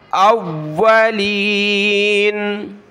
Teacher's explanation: جب رکیں گے تو اولین، واو کو سخت کیا